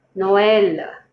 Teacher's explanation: The E is stressed more than the O.